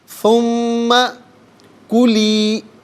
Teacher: ثم کلی، اب ناظرین بہت سے ہمارے احباب جب پڑھتے ہیں تو کاف اور قاف میں، یعنی دو نقطوں والے قاف میں اور اس کاف میں فرق نہیں کرتے، تو یہ کلی یعنی اس کاف کو باریک کر کے پڑھا جائے گا